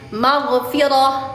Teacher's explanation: huruf ghin atau huruf gho tidak memantul ketika sukun. Tidak memantul karena dia bukan huruf qalqalah.